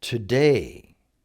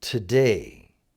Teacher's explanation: that two-syllable word should be spoken or pronounced with day being emphasized. In other words, it's not today, it's today.